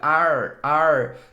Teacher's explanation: toda palavra terminada com R vai ter esse R puxado para o interior, esse R caipira